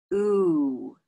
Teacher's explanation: If you have oo in your language, in your first language, maybe it's a non-moving oo. But in English, we have a slight closing of the lips, oo. So here are the lips, oo.